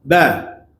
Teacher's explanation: Mim dengan ba ni bersamaan pada makhraj, iaitu antara dua bibir. Ba dengan mim ni di bibir belaka. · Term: bibir rapat